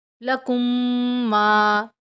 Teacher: میم ساکن کے بعد میم غنہ کریں گے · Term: ادغام شفی